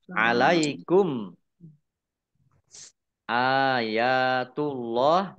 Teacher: Allahnya dibaca tebal karena harakat di depannya domah · mim sukun bertemu dengan huruf alif bacaan izhar syafawi dibaca jelas